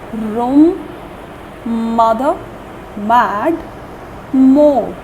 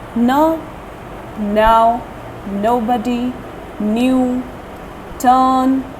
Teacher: we exhale through our nose. The words come out through the nasal cavity. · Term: nasal sounds